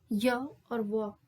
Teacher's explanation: इन ध्वनियों के उच्चारण में जो उच्चारण अव्यय है ना जो जीभ और होठ है वो कहीं पर भी पूर्ण स्पर्श नहीं करते हैं। हल्के बहुत स्पर्श करते हैं। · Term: अंतस्थ व्यंजन